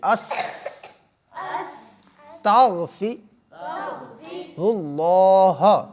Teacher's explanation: اللہ کی آواز بھاری آتی ہے، موٹی آتی ہے، اس سے پور پڑا جاتا ہے